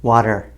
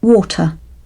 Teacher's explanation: in North American English, the T is changed sometimes to a D sound